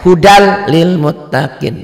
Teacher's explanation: tanpa disertai dengan dengung idgham bilagunnah ialah nun mati atau tanwin dibaca melebur pada huruf sesudahnya tanpa dengung apabila berhadapan dengan huruf lam atau roh · ini bunyi Nun matinya atau taninya melebur masuk ke bunyi l&r jadi bunyi n-nya bunyi n-nya berubah menjadi er atau menjadi l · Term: idghom Bila Ghunnah